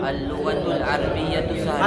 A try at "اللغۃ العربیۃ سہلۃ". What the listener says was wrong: عربیہ نہیں عربیہ، را پر زبر، اللغۃ العربیۃ سہلۃ.